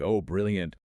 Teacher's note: We elongate the vowel significantly. We drag it out, · >> It's almost like you are aggressively underlining the word with your vocal cords. You hit it with this weird heavy emphasis to highlight how ridiculous the word is in the current context.